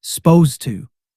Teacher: >> You'll also hear people say it even faster, almost like supposed to, dropping that first vowel sound entirely, cutting two syllables down to one. >> That's extremely common in fast, casual conversation.